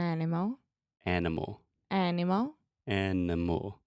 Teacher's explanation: are you recognizing the pattern that the schwa occurs in that unstressed middle sound?